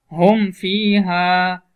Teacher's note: اس کی مثال جیسے ہم فیہا، اب میم ساکن ہے اس کے بعد فا ہے تو حرف با اور میم کے علاوہ ہے اس لیے غنہ نہیں ہوگا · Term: اظہار شفوی